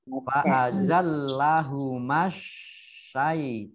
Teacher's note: Kemudian fa'azal lahuma, ini mim fathah alif harusnya matobi'i, tetapi karena bersambung dengan alif lam ya samsiah ditandai dengan ini shin tasdid, maka ma-nya dibaca pendek langsung masuk ke shin.